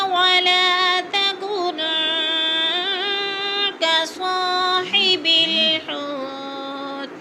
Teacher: تکن کی نون پر اخفا کریں گے. نون ساکن کے بعد کاف حروف اخما سے ہے تو غنہ کریں گے، ناک میں آواز لے جائیں گے.